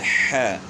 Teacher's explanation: ہا کی آواز جو ہے نا گلے کے درمیان سے نکلتی ہے